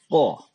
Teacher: Qaf itu tempat keluarnya berada di bagian lidah paling belakang, itu ditempelkan di langit-langit paling belakang juga.